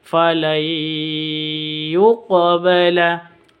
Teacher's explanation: Qaf sukun, ada qaf sukun, qalqalah sughra. Huruf qaf itu hurufnya qalqalah, tandanya harus sukun.